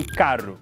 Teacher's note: falam um R seco, com a língua atrás dos dentes, tipo em carro.